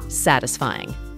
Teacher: Note that the word is stressed on the first syllable.